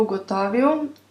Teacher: se L izgovarja kot ustnično-ustnični V, ker stoji za samoglasnikom in na koncu besede